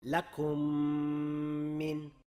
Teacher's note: labni yopib, idg'om qilinayotgan mimni ikki harakatgacha choʻzib va gʻunna qoʻshib o'qidik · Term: idom mislayn, g'unnali idg'om mislayn